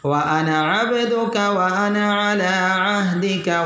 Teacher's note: الف کو لمبا نہیں کرنا، نون کو لمبا نہیں کرنا، الف کو ادا نہیں کرنا۔